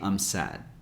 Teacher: in sad we don't really release the D sound cuz if you do it doesn't sound as natural as if